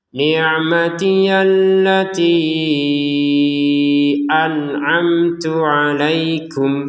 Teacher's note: Nun sukun bertemu ain kita baca dengan jelas. Mim sukun bertemu ta dibaca dengan jelas juga. An'amtu harus berbeda antara hamzah dan ain ya.